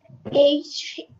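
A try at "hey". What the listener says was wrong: না, এটা কি এইচ হবে? এটা সাউন্ড হবে হা এই হেই, হা এই হেই, বলো তো আবার।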